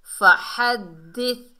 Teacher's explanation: ہا کو حلق کے درمیان سے ادا کریں گے